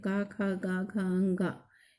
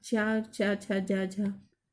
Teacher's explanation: का उच्चारण कंठ से हुआ, चा का उच्चारण हमारे तालु से हुआ